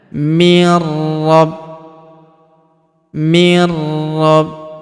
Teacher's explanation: Nun sukun bertemu huruf ro berharakat tasydid. Nun sukunnya melebur ke huruf ro yang berharakat tasydid. Kita tahan dan tekan ya.